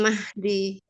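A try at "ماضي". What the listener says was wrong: Madi bukan Mahdi, Mi. Nggak ada haknya ya. Madi.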